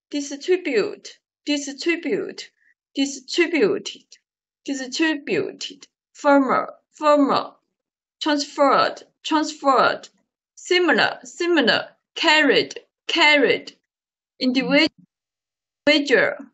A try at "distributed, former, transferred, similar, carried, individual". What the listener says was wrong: 非 常 完 美 ， 非 常 完 美